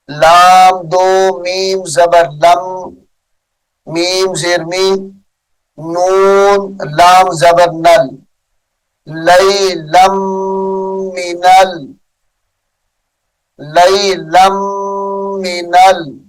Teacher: لیلم غنے کے ساتھ پڑھیں گے، یہاں پر ادغام ہوگا.